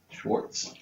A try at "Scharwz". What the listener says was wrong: There's no T on the end of that, so